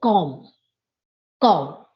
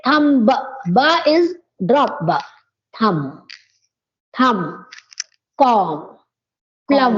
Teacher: MB, you have to drop the sound of B.